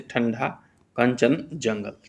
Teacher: अनुस्वार के उच्चारण में वायु नाक से निकलती है और उच्चारण झटके के साथ होता है, जैसे ठंडा, कंचन, जंगल, ठीक है।